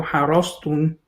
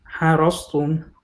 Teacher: So the hard part is the ح is مرققة بس الراء مفخمة.